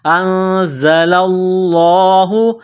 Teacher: نون ساکن پر غنہ کریں گے، آواز ناک میں چھپائیں گے، دانتوں کو سختی کے ساتھ ملائیں گے، زا کو پڑھتے وقت زا میں سیٹی کی آواز پیدا کریں گے · لفظ اللہ کے نام سے پہلے زبر ہے، لفظ اللہ کے نام کو موٹا کرنا ہے